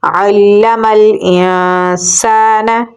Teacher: حمزہ کو نون کے ساتھ ملائیں گے اور یہاں پر اخفا ہوگا۔ سین میں ہم سیٹی کی آواز دیں گے اور آگے الف مدہ ہے تو اسے ہم لمبا پڑھیں گے۔ نون کے اوپر حرکت ہے تو اسے ہم لمبا نہیں کریں گے۔